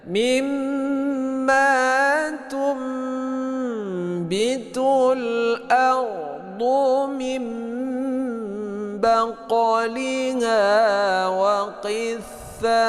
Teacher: Berdengungnya kepada bunyi mim ya. Membalikkan bunyi nun mati kepada bunyi mim mati. Jadi saat kita baca seakan-akan yang mati adalah huruf mim. · Dia tidak min, tidak, tapi mim mulutnya ditutup ya. Baqaliha ini qalqalah sughra, panjangnya pantulannya sedikit. · jadi tidak min tidak tapi mim mulutnya ditutup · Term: iqlab